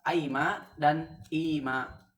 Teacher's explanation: mim yang pertama dalam Amma am ma dan imma ditukar kepada ya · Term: disimilasi ke belakang